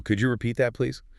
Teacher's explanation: that subtle upward inflection signals a genuine question, an invitation for clarity. It doesn't sound like a flat, demanding statement. · try to cultivate a slight rising pitch at the end. Rising pitch, like asking a question.